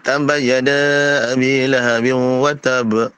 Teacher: Tapi taba sabdu, dia bukan taba mati. Wa tab ba yang pertama mati, ba yang kedua letupkan, qalqalah kan.